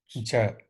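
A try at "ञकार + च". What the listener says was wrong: Not ja. It is cha. It is cha, not ja.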